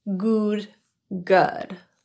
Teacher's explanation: the vowel in good is an Upsilon vowel rather than ooh or that ooh pronunciation that's often confused with the Upsilon vowel · or that ooh pronunciation that's often confused with the Upsilon vowel is pronounced with a more relaxed lip position than oo and the tongue and the jaw are in a more neutral position as well it's kind of like a lazy pronunciation of ooh good good